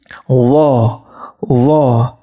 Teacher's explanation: huruf d ketika ujung lidah kalian itu bertemu dengan ujung gigi seri atas tetapi ingat lidahnya atau lidah tengahnya itu mendekati langit-langit d d